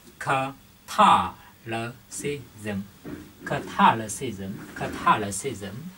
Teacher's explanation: Tới 5 vần đúng không ạ? Chúng ta sẽ nhấn vần 2.